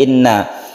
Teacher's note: Inna kita tahan karena guna musyaddadah